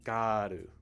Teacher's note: when you say these words in japanese the er sound is actually used as an ah an ah sound